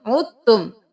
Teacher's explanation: آیت نمبر 7 میں ہی دیکھیے، مرۃ ولیتبروا، مرۃ ولیتبروا، یہاں پر دیکھ لیجئے، وَإِنْ عُدْتُمْ، یہاں پر ہم عُدْتُم نہیں کریں گے، ہم عین پیش تا عد کریں گے کیونکہ دال ساکن ہے اور پھر آگے مشدد حرف ہے، تو ہم ساکن کو چھوڑ کر مشدد کے ساتھ ملائیں گے، عین پیش تا عد، تا پیش میم تم، عدتم، عدتم نہیں کریں گے، دال یہاں پہ نہیں پڑھیں گے۔